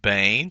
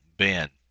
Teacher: the Sarai, which is long E sound, reduces to a short E of the Sagol, Ben, son of.